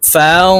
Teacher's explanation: নুন সাকিনের পরে ইকফার হরফ ফা আসছে তাই এই নুনকে নাকের ভিতরে লুকাইয়া গুন্নার সহিত পড়বো